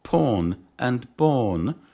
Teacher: begin with bilabial consonants produced with both lips